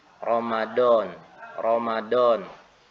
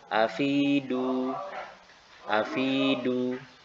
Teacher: dia menekan bagian ujung lidahnya sehingga berakibat menjadi huruf Dal